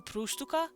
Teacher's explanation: i would emphasize the two just a little because it's the next to last syllable